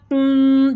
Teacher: قاف کو ہم نے جو ہے ٹنگ کے روٹ سے ادا کرنا ہے اور ہیوی ساؤنڈ میں پڑھنا ہے اور منہ کھول کے زور لگا کے اس کا مخرج ادا کریں گے تاکہ اس کا مخرج صحیح سے ادا ہو.